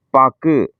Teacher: அந்த கு வந்து அந்த ஒரு மாத்திரையிலிருந்து அரை மாத்திரை சவுண்டா குறையுது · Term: குற்றியல் உகரம்